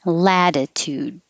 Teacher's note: the first t changes to a d like lad latitude · i'm not releasing the d in any of these